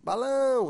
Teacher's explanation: observa a sílaba tônica é a última portanto oxítona